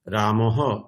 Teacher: এখানে অকারের পরে বিসর্গ আছে, তাই হকারের সাথে অকার যুক্ত হয়ে রামঃ এরকম উচ্চারণ হবে